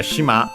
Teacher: shima on its own, accent on the last syllable, means island